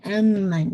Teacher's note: ام پہ آپ نے پورا غنہ نیزل غنہ کرنا ہے. آپ کی ساؤنڈ جو ہے وہ نیزل کیویٹی میں جانی چاہیے